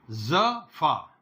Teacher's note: तो ये जो फा है ये दंत्योष्ठ ध्वनि में आता है